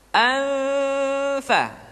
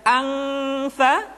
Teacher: nun mati tanwin ketika digunakan posisi makhraj sudah berada pada huruf fa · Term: ikhfa